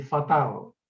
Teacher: la variante vernácula de la L final, la que aparece en palabras como fatal, y que les recuerdo es la pronunciación velarizada de fatal, aproximadamente. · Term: L velar